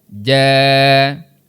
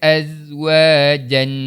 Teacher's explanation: Digantikan tanwin dua di atas kepada baris atas dan dibaca dengan kadar dua harakat. · Maka dekat sini jim tanwin dua di atas kita ganti kepada jim baris atas. Jim baris atas bunyinya ja dan dibaca dengan kadar dua harakat. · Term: mad ewat